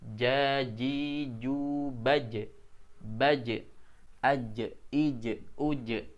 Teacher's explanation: Ketika kita sukunkan hurufnya terasa dari tengah lidah, ya, yang terangkat ke langit-langit. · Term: huruf ja